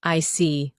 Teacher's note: When you show understanding with I see, your tone drops slightly to show calmness.